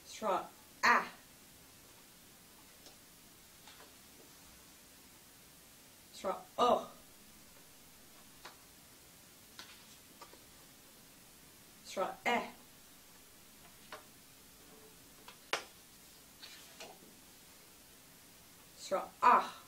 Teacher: For the last four vowels, you'll want to put an aspirated H at the end of each of them